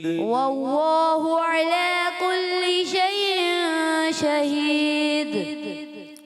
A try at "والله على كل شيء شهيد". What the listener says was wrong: تھوڑا غننے کی ادائیگی اور حمزہ کو اور واضح کرنے کی کوشش کریں. والارض میں بھی ضاد کی ادائیگی کلیئر اور زیادہ ہو.